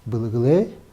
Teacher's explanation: когда мы х просто убираем, и два гласных у нас как бы образуют одну гласную долгую